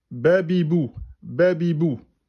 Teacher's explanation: Vous ne prolongez pas la voyelle.